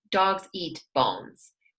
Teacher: We have dogs and we have bones, and they are the same kind of stress. Eat kind of goes down.